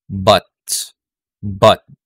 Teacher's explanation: So very relaxed siya, very neutral, and unrounded.